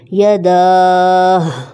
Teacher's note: وقف کے ٹائم ہا کی آواز آئے گی